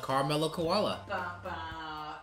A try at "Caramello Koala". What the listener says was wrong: In Australia, it's pronounced Caramello Koala. There's A's in there.